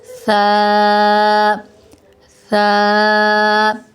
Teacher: سا، سا جو ہے یہ نرمی والے حروف میں سے ہے، سا اس کے ادا کرتے وقت ہم نے سیٹی کی آواز کو نہیں نکالا ، بالکل نرمی کے ساتھ سا ادا جب کرتے ہیں ہم